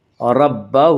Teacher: لمن خشیہ ربہ، ربہ کے را کو پر پڑھا جائے گا، اس کا قاعدہ ہے کہ را کے اوپر زبر پیش ہے تو را کو پر پڑھا جائے گا، را کے نیچے زیر ہے تو را کو باریک پڑھا جائے گا، را کے اوپر زبر سے را کو پر پڑھیں گے